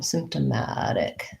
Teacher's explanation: it's going to have stress on the penultimate syllable, second to last.